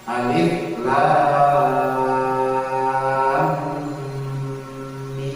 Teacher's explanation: Lam mim, lam ujungnya huruf mim, kemudian mim awalnya huruf mim. Mim ketemu mim jadi dengung, gitu caranya. Maka ditahan.